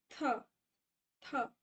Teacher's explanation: जब आप थ बोलोगे द बोलोगे तो आपकी जो टंग है वो दोनों टीथ के बीच में आएगी। · इंटरडेंटल मतलब टंग जो है दोनों टीथ के बीच में रहेगी